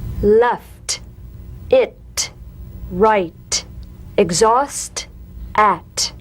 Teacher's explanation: The same staccato springing action as the D drum beat, with no voice, forms the light tap of the T. Feel a gentle pulsation in the tongue. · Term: unvoiced T